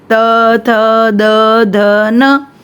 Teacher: दंतव्य यानी कि हमारी दांतों को टच करता है, जीभ हमारी, त, थ, द, ध, न, देखो हमारी दांतों को टच करती है।